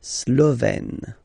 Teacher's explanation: Remember, E accent grave, you open it, E.